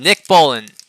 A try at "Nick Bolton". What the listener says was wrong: You're not even saying it. That's the problem. You're saying Bolin.